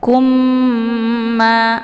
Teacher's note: mimnya didengungkan ditekan kemudian ditahan lebih kurang 2 harokat sehingga terbentuk suara yang mendengung sambil dileburkan ke dalam huruf ya kata lain juga disebut dengan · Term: Idgham Mimi